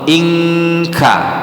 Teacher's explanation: ketika dia ada huruf nun mati atau tanwin ketemu ka maka dia betul-betul dibentuk huruf ng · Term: ikhfa